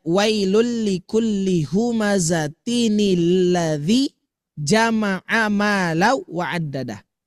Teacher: Adalah sebagai tanda yang menunjukkan bahwa tanwin yang bunyi asalnya berakhiran nun sukun itu dihidupkan dengan harokat kasroh. Ya, nunnya ya dengan harokat kasroh nunnya dengan tujuan untuk menghindari bertemunya 2 huruf sukun.